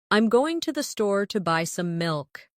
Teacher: Notice how certain words are stressed. Going, store, buy, milk. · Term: stressed and unstressed syllables